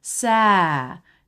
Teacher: It goes up a little bit and then down.